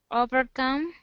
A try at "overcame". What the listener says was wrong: Close. This has a long A sound right here. Overcame.